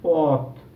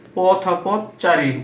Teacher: যেমন এখানে আমি বলেছি পথ, এটা উচ্চারণটা করেছি পথ, এখানে কিন্তু ওকার রূপে উচ্চারণ না, হসন্ত রূপে উচ্চারিত হয়েছে। কিন্তু যখনই আমি এটাকে সমাসবদ্ধ অবস্থায় বা সমাসবদ্ধ পদে ব্যবহার করব তখন কিন্তু সেটার উচ্চারণ অ এর উচ্চারণ ওকারের মতো হয়ে যাবে